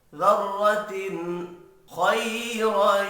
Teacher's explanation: مثقال ذرۃ، ذر را پر پڑھا جائے گا زبر کی وجہ سے. تنوین کے بعد حروف حلقی ہے، اظہار حلقی ہوگا، غنہ نہیں ہوگا